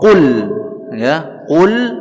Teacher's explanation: qaf pangkal lidah dengan langit-langit atas